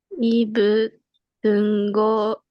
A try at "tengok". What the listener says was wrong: It's not tengok, it's te. Tengok. Tengok.